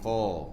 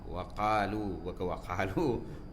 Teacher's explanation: Bunyi qaf ini kalau bagi atas dia isti'ala, jadi qa. Tinggi kan bunyi tu?